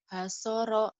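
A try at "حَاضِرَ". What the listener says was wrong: Hasoro kan ada titiknya, Neng. Hadoro.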